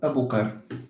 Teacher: In the dialect I speak natively, it's this r. This r that comes from l. It's rotacism.